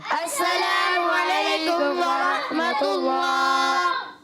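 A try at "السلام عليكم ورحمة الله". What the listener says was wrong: آخر میں ہا کی ادائیگی بھی کرنی ہے. السلام علیکم ورحمۃ اللہ.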